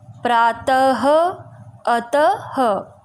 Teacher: जब हम अतः, प्रातः जैसे शब्दों का उच्चारण करते हैं तो अंत में ह आता है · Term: विसर्ग